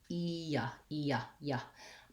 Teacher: The glide is very similar to this E sound. So when my y sound is kind of an E plus a schwa. E-ya. But what I have to do is go so quickly on that y that we don't really linger on the E.